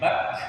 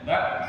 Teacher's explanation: Dan dia bukan huruf qalqalah, tapi ketika dia sakinah harus ada hams yang keluar ya.